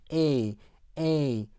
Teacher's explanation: 그 다음에 애가 여기 있는데 요거보다 조금 높은, 애보다 조금 높으면서 좀 긴장이 된 어떤 그러한 애 사운드에서 A 이렇게 발음합니다